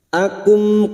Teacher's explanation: Ahwa akum, akum mim sukun bertemu qaf, mim sukun bertemu qaf, idhar syafawi, mim sukun dibaca jelas tanpa mendengung